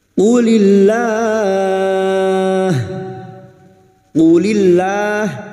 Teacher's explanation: Lam jalalah yang didahului kasrah kita baca tarkik tipis